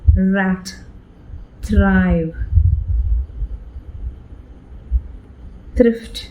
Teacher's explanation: The tongue curls and touches the roof of the mouth and has taps and rolls over the at the roof of the mouth.